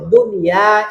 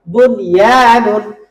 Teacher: আপনি দুনিয়া শব্দে এই ইদগামের নিয়ম অ্যাপ্লাই করতে পারবেন না। এটা নরমাল নিয়ম হবে, মানে ইজহারের মতো হবে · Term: নরমাল উচ্চারণ